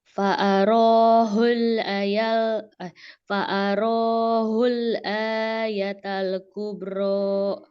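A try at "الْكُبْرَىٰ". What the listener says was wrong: Kubro. Mana qalqalahnya? Jangan di ini. Jangan di skip. Biarkan dia kolkolahnya itu dengar jelas, baru pindah ke yang lain.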